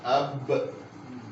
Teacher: تو آپ دیکھیں یہ آواز کہاں سے آ رہی ہے, ہونٹوں سے آ رہی ہے. تو ہونٹ با کا مخرج, دونوں ہونٹ ملتے ہیں